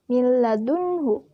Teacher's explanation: Karena huruf H di sini merupakan huruf izhar. Dibacanya pun jelas dan tidak berdengung sama sekali. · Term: ijhar